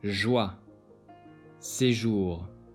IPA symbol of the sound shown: ʒ